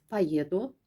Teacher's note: vurğu o'ya düşmədiyinə görə də burada o yox, a deyəcəksiniz